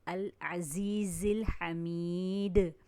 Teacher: زا سیٹی اور سختی والا حرف ہے